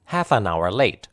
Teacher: The stressed words in this part are half and late. The words an hour are unstressed and lightly pronounced.